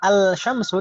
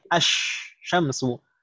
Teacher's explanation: Shin itu huruf syamsiyah. Kalau kita tambahkan al, maka lamnya tidak terbaca jelas, tidak izhar, tapi langsung idgham ke huruf syamsiyah tersebut.